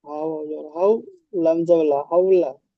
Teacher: ওয়াও লিন সর্বদা নরম আওয়াজে পড়তে হয়, টান দেওয়া নিষেধ। লামের উপরে যাবার আছে, যাবারটি হলো হারাকাত।